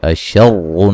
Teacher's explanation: را کو موٹا ادا کریں گے، مشدد را ہے اور پیش والی ہے، ٹھیک ہے جی، پیش ہو یا دو پیش ہوں، را کو موٹا ادا کریں گے۔